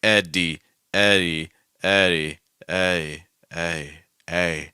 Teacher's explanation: Like it's like spectrum. We start off with like a firm D sound, and then we move closer to where there's like no D at all.